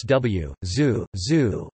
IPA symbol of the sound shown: zuː